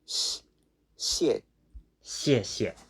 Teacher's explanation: And the X is a sound in between the S and the sh. It's in between.